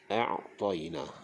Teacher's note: Okay, yang kedua pada a'taina tu, pada huruf ain tu makhrajnya di bahagian tengah kerongkong